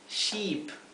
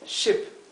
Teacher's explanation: Oveja es sheep, una i larga. Barco es ship, una i bien cortita.